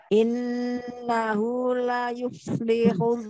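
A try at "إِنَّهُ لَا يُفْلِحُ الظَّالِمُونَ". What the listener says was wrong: Innahu la, la-nya sempurnakan dua harokatnya.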